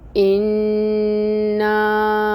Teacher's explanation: حمزہ، اس کے نیچے کسرہ، 1 کاؤنٹ پڑھیں گے اس حرکت کو، ای کی ساؤنڈ آئے گی اور حمزہ کو محقق ادا کرنا ہے، شدت ہوگی اس میں، نون مشدد ہے اور غنہ 2 کاؤنٹس کا کیا جائے گا۔ اور یہاں پہ حمزہ کے اوپر آپ دیکھ رہے ہیں کہ مد منفصل بنی ہوئی ہے۔